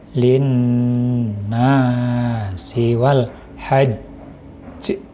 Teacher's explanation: huruf Sin pada posisi terakhir posisi berhenti atau posisi waqaf makan membacanya menjadi qolqolah kubro memantul nya itu tebel